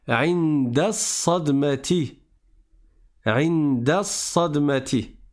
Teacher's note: Dès que tu vois la shadda après le alif lam, tu sais que le alif lam, tu ne vas pas le prononcer. Le alif, tu ne le prononces pas parce que tu es en milieu de la phrase, et le lam, tu ne le prononces pas parce qu'il y a la shadda juste après. Donc tu passes du da au sad, et tu dis Inda sadmati. · Le lem, on ne le prononce pas parce que le sad est une lettre solaire.